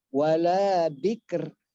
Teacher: Ro itu kan takrir, bergetar dia.